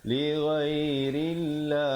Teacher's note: ra di situ dibacakan nipis ya